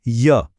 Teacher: इस बार जीभ ने पूरा टच नहीं किया, बस हल्का सा पास आई, यही है ईषत् स्पृष्टा।